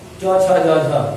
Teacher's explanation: य और च छ ज झ, इनका उच्चारण स्थान ताल